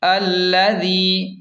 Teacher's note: ذال کو نرم پڑھیں گے اور یا مدہ کو تھوڑا سا کھینچ کر پڑھیں گے